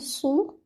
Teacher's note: Read your Sod heavy. So, do not read it like Seen